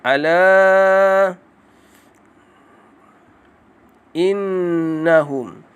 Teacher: Ala ada mat iaitu panjang kena baca pada huruf la. Sekadar 4 ataupun 5 harakat sahaja. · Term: mak jaiz munfasil